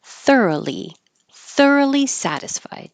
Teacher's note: it looks like a lot of O's but there's no o sound just R